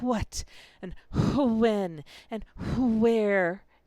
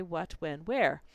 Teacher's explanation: the H component of it Stripped Away from most words and we don't say what and when and where anymore we